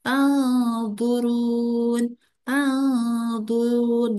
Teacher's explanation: sebutan nun mati atau tanwin itu dibaca antara idhar dan idgham. Jadi tidak jelas dan juga tidak dimasukkan, tapi harus berdengung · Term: ikhfa